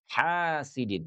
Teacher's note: Jadi kata hasidin ini keluarnya dari tengah tenggorokan.